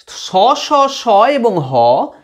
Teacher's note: তালব্য স, দন্ত স, মূর্ধা স এবং হ, এইগুলো অনেকক্ষণ ধরে প্রলম্বিত হয় বলে শ্বাসবায়ুটা ঘর্ষিত হয়ে একটু উষ্ণ হয়ে যায়। এই উষ্ণতার পার্থক্য এতটাই কম যে আমরা হাত দিয়ে অনুভব করতে পারি না।